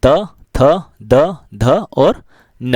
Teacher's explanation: जीभ दांतों को जाकर स्पर्श करती है उन्हें इस दंत व्यंजन कहते हैं।